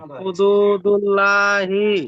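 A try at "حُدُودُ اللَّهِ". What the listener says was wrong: লা নয় ল। এখানে কায়দা কি বলেছিলাম, যে আল্লাহ শব্দের পূর্বে, এটা হলো পুরোটা একটা আল্লাহর শব্দ, তাহলে আল্লাহর শব্দের পূর্বের অক্ষরে যদি জাবার অথবা পেশ থাকে তাহলে আল্লাহ শব্দটাকে পুর করে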